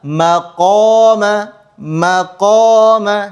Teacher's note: Maqoma itu huruf kaf. Huruf qof agak ke belakang ya. Jadi posisinya lebih dalam.